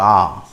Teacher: মুখটা যেহেতু খোলা থাকছে এর নাম হচ্ছে বিবৃত স্বরধ্বনি